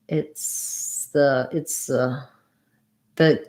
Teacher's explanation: the s kind of kind of turn into a z and we still have our schwa